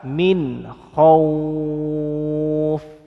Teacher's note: nun sukun meets ko, so it is read clearly as izhar halqi, no need to hold it